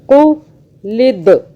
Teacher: دال پہ قلقلہ کیا, جھٹکے سے پڑھا